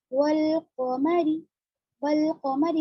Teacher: यहाँ पर सिर्फ लाम पढ़ा जाएगा, अलिफ को हम नहीं पढ़ेंगे। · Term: हुरूफ कमरी